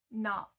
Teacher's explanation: the O sound isn't so much of an O, it's always more of an A kind of sound in Americans, so it's more like nut, because it's like you don't really pronounce the T either.